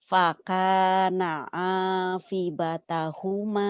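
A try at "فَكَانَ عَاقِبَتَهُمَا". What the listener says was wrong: Bukan afi, kan titiknya 2. Itu Mbak.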